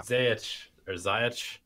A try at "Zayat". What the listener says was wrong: Zayat. I believe it's pronounced Zayat. Like a T.